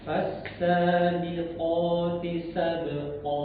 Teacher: Jadi bukan sekadar to ya, tapi o agak ditebalkan lagi.